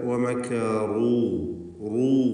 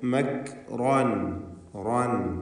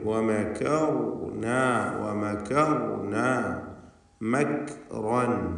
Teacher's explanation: ഇവിടെയുള്ള റാഹുകളൊക്കെയും 4 പദങ്ങളിൽ വന്ന ഈ റാഹുകളൊക്കെയും തഫ്ഖീം ചെയ്യേണ്ട റാഹുകളാണ്. ഇതിൽ ആ റാ അല്ലാത്ത മീം, കാഫ് ഈ അക്ഷരങ്ങളാണെങ്കിൽ ഇസ്തിഫാലിൻ്റേതാണ്, തർക്കീഖ് ചെയ്യേണ്ടവയാണ്.